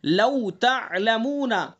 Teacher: تا کے بعد عین ہے، عین کو صاف پڑھیں گے، حلق سے پڑھیں گے